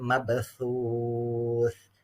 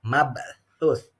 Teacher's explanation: Lidahnya digigit ya, bukan mabsus